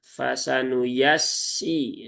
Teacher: Fasanu ini tipis semua dan nggak ada yang panjang.